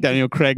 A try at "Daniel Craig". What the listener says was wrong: You put two vowels next to each other. I'm saying one of them. I'm not saying both of them.